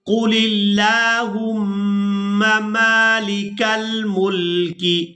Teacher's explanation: لام کو لفظ اللہ کے لام کے ساتھ ملائیں گے تو لفظ اللہ کے لام کو باریک ادا کریں گے کیونکہ اس سے پہلے والا جو حرف لام ہے اس کے نیچے ہے زیر